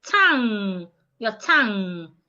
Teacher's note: The G should not be heard.